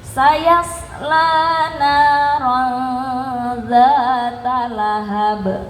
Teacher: Saya selana itu nada ketiga, nada yang diturunkan.